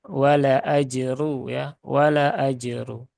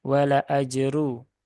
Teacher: runya dibaca tebal ya runya dibaca tebal karena dia berharakat domah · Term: tafkhim